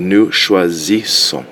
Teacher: you get the Z sound in the beginning with the one S, and the double S's makes more of an S sound